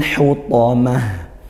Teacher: ada lam takrif bertemu huruf qamariah huruf ha maka hukumnya izhar qamariah dibaca jelas